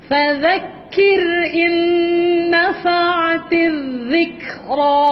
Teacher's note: huruf zal zal hujung lidah keluar di antara gigi atas dan bawah